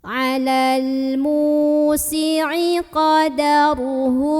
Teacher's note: huruf mim yang barisnya dhammah ini kita panjangkan 2 harokat saja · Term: mad tabi'i